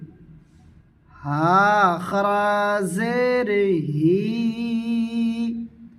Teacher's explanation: ছোট হা সিনাহ থেকে আদায় করবে